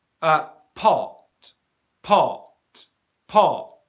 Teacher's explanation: Can you hear there's a little bit of airflow there, but not a lot?